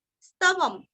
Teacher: अनुस्वार का उच्चारण आधा म